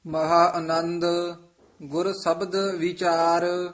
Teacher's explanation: ਵੀਚਾਰ ਲਮਕਾ ਕੇ ਨਹੀਂ ਬੋਲਣਾ ਛੇਤੀ ਬੋਲਣਾ ਹੈ ਇਕੱਠਾ ਹੀ ਬੋਲਣਾ ਹੈ ਵੀਚਾਰ ਬਿਹਾਰੀ ਨਾਲ ਮਹਾ ਅਨੰਦ ਗੁਰ ਸਬਦ